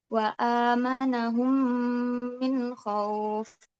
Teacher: Hurufnya hanya mim gitu. Jadi cara bacanya itu dimasukkan ke huruf setelahnya atau huruf mim ee disertai dengan dengungan gitu. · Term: idgham syafawi, Idgham syafawi